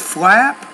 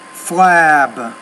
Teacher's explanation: When the P's at the end of the word, because the P's a voiceless consonant, the vowel which precedes it should be shorter. But when the B's at the end of the word, a voice consonant, the vowel which precedes it should be longer